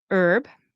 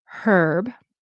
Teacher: Americans will say herb, right, with not pronouncing the H. Canadians very often will pronounce the H, herb. I tend to say herb with an H.